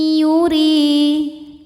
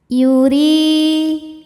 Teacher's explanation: Huruf ra dibunyikan secara tarqiq karena ra berbaris kasrah, maka dibacanya tipis.